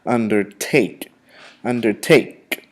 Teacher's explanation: The emphasis or the accent is placed on the third syllable, not the second, the third syllable.